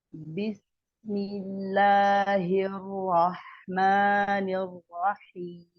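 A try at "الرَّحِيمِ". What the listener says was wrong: Nah, Ar-Rahman bagus. Ar-Rahim dikit monyong tadi. Jadi harus sama dua-duanya. Jadi nanti hati-hati setiap roh tasydid ya. Tidak ada pergerakan dari dua bibir sama sekali.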